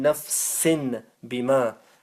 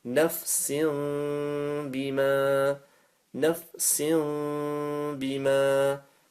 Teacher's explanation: Okay, we won't be saying nafsin bima. We've got a tanween, we change that for a mim, okay? Because of the ba afterwards.